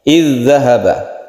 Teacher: zal yang disukun ini menjadi hilang dan langsung ditasydidkan zal berikutnya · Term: idgham mutamatsilain